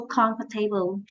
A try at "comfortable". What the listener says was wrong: Not tay, to. Comfortable.